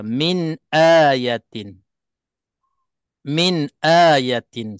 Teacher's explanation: nun mati dinyatakan dengan terang dengan ah huruf-huruf yang di halquum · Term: izhar